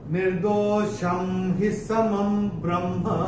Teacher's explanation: अनुस्वार के बाद जब ह आएगा तो अनुस्वार का उच्चारण होगा म।